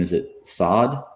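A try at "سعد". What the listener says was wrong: It's Saad. It's not sad.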